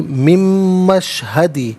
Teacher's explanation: فویل للذین کفروا، را پر پیش ہے، را کو پر کر کے پڑھتے ہیں، کفروا من مشہدی، من میں نون ساکن ہے، اسے مشہدی کی میم کے ساتھ ملائیں گے، میم کی آواز کو غنے کے ساتھ ادا کریں گے